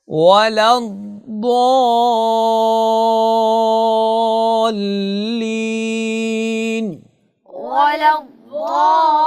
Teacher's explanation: اس کلمہ میں آپ نے حرف ضاد کی ادائیگی میں صفت استطالت کو برقرار رکھنا ہے اور ضاد کو موٹا کر کے بھی پڑھنا ہے، اور اس کے بعد آپ نے مد کا اہتمام کرنا ہے، چونکہ یہاں پہ مد پائی جا رہی ہے. آپ نے 5 سے 6 حرکات اس کو لمبا کر کے پڑھنا ہے. ولا الضالين ولا الضالين.